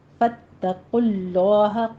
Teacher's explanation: فاتقوا اللہ میں تا کو آپ نے موٹا نہیں کرنا ، فتو نہیں کہنا، فاتقوا اللہ، قوف کو پر پڑھیں گے،